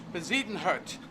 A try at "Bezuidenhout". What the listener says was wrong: Yeah, or the middle part is less Z and more A, like Bezuidenhout.